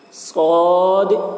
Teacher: مد لازم حرفی مخفف کو 3 یا 4 الف کے برابر کھینچ کر پڑھیں گے